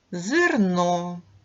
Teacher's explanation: ненаголошений е переважно вимовляємо з наближенням до и